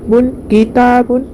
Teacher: بن میں اظہار ہوگا، تنوین کے بعد حروف حلقی میں سے ہا ہے تو نون کی آواز کو ظاہر کر کے بغیر غنہ کے جلد پڑھیں گے۔ بن، کتابن، ہا کے اوپر زبر ہے، جلد پڑھیں گے ہا۔